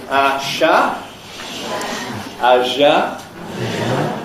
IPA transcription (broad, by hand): ɑʃɑ ɑʒɑ